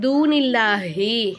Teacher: அல்லாஹுங்கிற வார்த்தைக்கு முன்னாடி இருக்கக்கூடிய எழுத்துல வந்து ஜேரு வந்துச்சுனாக்கா அப்போ அல்லாஹுங்கிற வார்த்தையை மெல்லினமா, அதாவது மெதுவாக வாசித்தாலே போதும்.